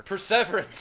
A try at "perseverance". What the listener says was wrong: Perseverance. You're putting the emphasis on the wrong syllable.